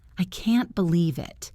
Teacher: You missed your bus. You are frustrated. You might stress the word can't.